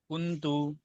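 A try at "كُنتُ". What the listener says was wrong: కొంచెం దీర్ఘం తీయండి ఇక్కడ ఇఫ్ చేయాలి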